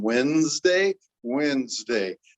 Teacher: I feel like when I say Wednesday, I feel a D going between the N to the Z in Wednesday